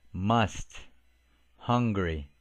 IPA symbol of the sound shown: ə